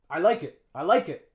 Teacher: notice how the K we linked it on to the schwa in it